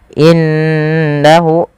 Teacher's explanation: Pada lafal qala innahu, panjangkan ko-nya dua harakat karena dia ada mad tabi'i. Innahu, tahan suara gunnahnya ketika kita mendapati ada nun berharakat tasdid. Banyak yang kita lupa, meskipun kita sudah mengulang-ulanginya, terkadang kita lupa dalam membaca gunnah itu perlu ada penahanannya dan memasukkan ke rongga hidung.